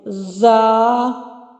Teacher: زا کو ادا کرتے ہوئے سیٹی کی آواز آنی چاہیے، زا، ٹھیک ہے۔